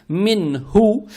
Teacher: Далее стоит буква ха, она мягкая на выдохе, произносится с даммой.